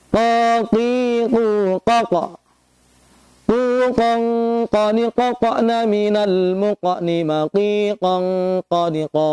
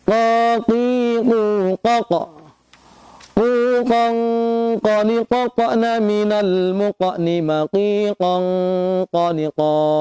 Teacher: Contoh, huruf qaf. Huruf qaf keluar dari pangkal lidah dengan langit yang lurus di atasnya.